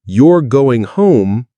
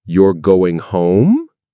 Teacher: In English, the statement, You're going home, has a falling melody.